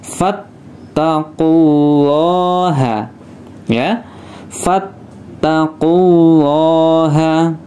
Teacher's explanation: Karena harokatnya sebelumnya dhammah, maka lafadz lam jalalah atau lafadz Allah ini dibaca tafkhim atau tebal ya